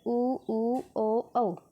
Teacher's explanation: मतलब जब हम बोलते हैं तो ये होठ की आकृति की बात हो रही है, होठ हमारा गोल हो रहा है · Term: वृत्ताकार